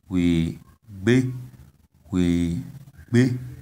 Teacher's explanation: You see, the tone is on the last vowel, a, we be, which means he or she left, or il ou elle est parti in French.